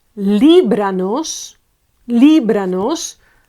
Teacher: Li is the accentuated one, and it's the one before the penultimate one, the antepenultimate. Okay, so it's 3 steps back.